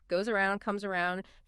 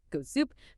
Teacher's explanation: When a voiceless S is followed by a voiced sound, like a vowel, it often becomes voiced itself, turning into that Z.